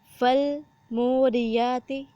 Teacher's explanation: میم کے ساتھ واو ہے، اس کو 1 الف کے برابر لمبا کیا جائے گا